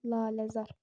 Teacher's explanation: Laləzar, uzanma birdədir. Vurğunun yeri ikinci hecada. Laləzar, vurğu buradadır.